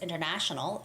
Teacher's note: The third syllable has the stress, so it's international, and it's the same with internationally.